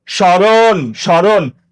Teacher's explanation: র এর সাথে একটা অ আছে, ওই মধ্যবর্ণের অ সবসময় উচ্চারণে ওকার হয়ে যায়